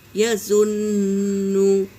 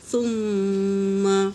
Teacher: نون پر تشدید ہے تو غنہ ہوگا